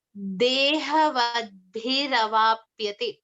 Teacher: There is a R sound that comes in between, which acts as a join between these two words. It links these two words together.